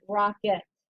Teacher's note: that dreaded schwa should be an E, but it just sounds like an I